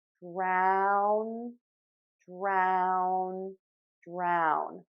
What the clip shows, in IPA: draʊn